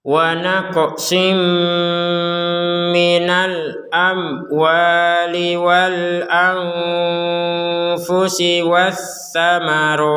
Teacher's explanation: Maka sekarang menjadi wa naqsim disertai dengungan karena bertemu dengan huruf mim.